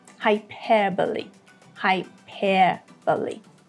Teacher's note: the British pronunciation, in which you won't hear the R here that much, it is hyperbole, hyperbole, a longer E.